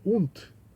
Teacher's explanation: esse und é com T no final, a pronúncia